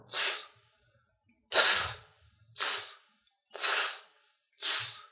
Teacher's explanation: you should pronounce this TS in hats in a way that T is very short, and you make it short by reducing the first and main part of the T sound.